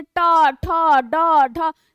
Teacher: देखिए जीवा पलट कर जा रहा हो, तालु के पिछले भाग को स्पर्श कर रहा है ना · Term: मूर्धन्य